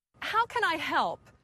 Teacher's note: the two small words can I sound like one word with two syllables